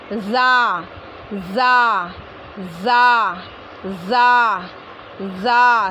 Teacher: ऊपर नीचे वाले 4 दांतों का किनारा, यानी ज़बान यानी हमारा मुंह जो है बंद करेंगे, हम दांत को बंद करेंगे ऊपर नीचे के और पीछे से ज़बान लगा के बोलेंगे ज़ा ज़ा ज़ा, है ना। ऊपर की 2 दांतों का किनारा और नीचे के 2 दांतों का किनारा, उनको करीब लाएंगे और फिर पीछे से ज़बान लगकर हुर्फ निकलेगा